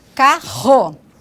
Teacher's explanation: o Rá, que é a consoante vibrante, né, alveolar, como em carro.